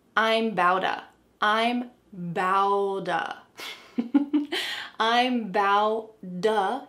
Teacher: this D sound is the T that's been changed into a D. Actually, the two T's that have been changed into D's. · There are T's surrounded by vowels, so what happens? We can change them to a D sound.